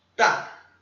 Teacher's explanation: é o quarto tom, é batido